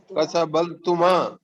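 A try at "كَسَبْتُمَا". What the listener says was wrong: لام نہیں ہے, لام نہیں ہے, لام کی جگہ با آ گیا.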